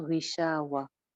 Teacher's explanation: ग़ी ग़ैन ज़ेर के साथ है, थोड़ा-सा मोटा